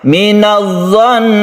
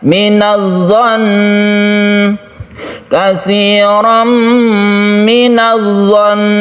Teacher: guna ketika waqaf itu tetap digunakan dengan ditekan ke nunnya. Minadh-dhon, dan ditahan. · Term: gunnah musyaddadah